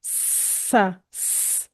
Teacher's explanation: सीन में भी सीटी है जैसे ये साउंड सा सी सिटी वाला साउंड है